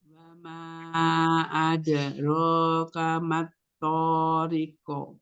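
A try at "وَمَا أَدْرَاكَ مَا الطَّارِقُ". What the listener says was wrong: Tempo qalqalahnya terlalu lama. Jadi setengah harokat aja. Wa ma adro langsung ya. Adro.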